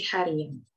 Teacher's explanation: pada dasar hari akan muncul bunyi semivokal Y menjadi hari tambah an menjadi harian